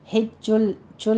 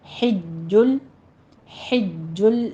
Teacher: چھ کی آواز نہیں آنی چاہیے، اس میں ہمس نہیں کرنا ہے، جیم کو قوی آواز کے ساتھ پڑھنا ہے، سختی کرنی ہے۔